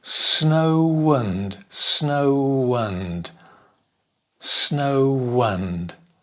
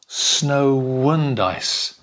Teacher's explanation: There's a W sound, a little W.